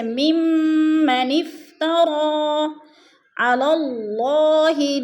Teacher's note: ممن افترا، ممن پہ جو ہے غنہ ہو رہا ہے، سختی سے جما کر پڑھیں گے اور ادغام کریں گے جیسے ممن افترا علی اللہ، اللہ پر پڑھا جائے گا اس لیے کہ اللہ اسم سے پہلے لام کے اوپر زبر ہے تو اللہ کو پر کر کے پڑھیں گے